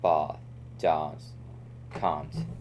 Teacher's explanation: and can't is elongated into a broader a sound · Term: short ah